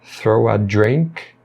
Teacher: Na palavra throw, vai emendar com o a